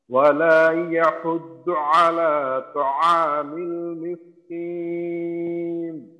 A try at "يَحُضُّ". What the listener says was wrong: আচ্ছা এই দদের উচ্চারণটাকে আরেকটু মাখরাজে রেখে আরেকটু মোটা করার চেষ্টা করা, যেন দালের মতো। অর্থাৎ যদি এইখানে আমরা দাল পেশ দু থাকতো তাহলে আমরা উচ্চারণ কি করতাম?